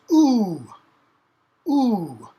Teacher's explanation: So your mouth gets rounded. So this is what's called a high back vowel. So it's the tongue's kind of up in the back of the mouth